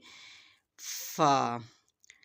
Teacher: فا، first of all ہم دیکھیں گے فا، اوپر کے سامنے والے دانتوں کا کنارہ نیچے والے ہونٹ کی اندرونی جانب کو ہلکا سا چھوتا ہے تو یہ نرم آواز اور ہلکی سی آواز نکلتی ہے۔ Tip of the upper front teeth lightly touch the inside of the lower lip, it's a soft and ایری sound. فا جو ہے وہ نرمی سے ادا کیا جاتا ہے۔